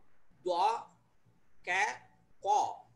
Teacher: உள்நாக்கு பகுதியிலிருந்து இது வெளிவரும்போது , இந்த 'கா' உருவாகிறது.